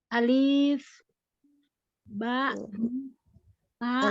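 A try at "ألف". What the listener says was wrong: Alifnya jangan ulangi Mi. Alifnya nggak panjang nih. Kita lihat tulisan Arabnya itu. Alif. Alif. Bukan alif. Alifnya nggak panjang ya. Pendek.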